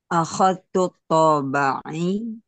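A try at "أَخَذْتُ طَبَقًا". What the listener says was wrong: Toba'i berarti di kasrah.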